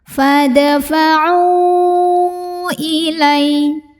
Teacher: Di mana mad tabi'inya ain waw sukun ya yang didahului dhammah terdapat pada kata fadfa'u Hamzahnya yang i terdapat pada kata ilaihim. Maka ainnya dipanjangkan boleh 4, boleh 5 harokat. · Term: Mad jaiz munfasil